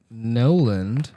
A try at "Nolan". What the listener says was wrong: saying Nolan with a D? No D.